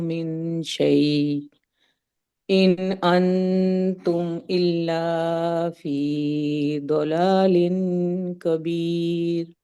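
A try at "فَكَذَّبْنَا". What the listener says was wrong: अना नज़ीर, और فکذبنا پہ زال کا جو مخرج ہے وہ زیڈ کی طرح ہو گیا تھا، فکذبنا کے بجائے فکذبنا ہو گیا تھا، ٹھیک ہے.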